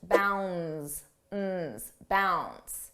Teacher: notice how bounds the D is not pronounced